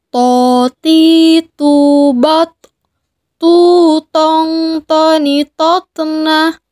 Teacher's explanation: Sama seperti kita melafalkan huruf ta. Perbedaannya dengan huruf ta adalah huruf to tidak mengalir nafas. Huruf to diucapkan dengan suara menebal. Caranya sama dengan kita melafalkan huruf ta. · Huruf ini keluar dengan menyentuhkan ujung lisan kita dengan tempat tumbuhnya dua gigi seri bagian atas, yang disebut dengan gusi. Sama seperti kita melafalkan huruf ta.